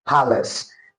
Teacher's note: the obsolete pronunciation has a weak vowel, that is a schwa sound, which is palace.